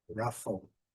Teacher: primeira sílaba é a sílaba forte